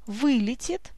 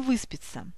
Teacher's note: эта приставка ударная она на себя притягивает ударение